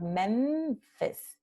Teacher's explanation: So already before we're pronouncing fis, that nasal mem is already in position of lower lip touching to the upper teeth in anticipation of pronouncing fis. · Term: nasal labiodental